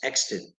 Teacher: you want to emphasize the first syllable